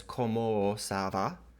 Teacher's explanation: this is using the lengthening of the vowel because of the nasal